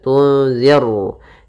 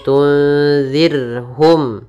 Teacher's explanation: di sini ra tipis, ra tarqiq, tunzir, zir, ya, tidak dibaca tunziru, nanti jadi ra tebal, tapi tunzirhum.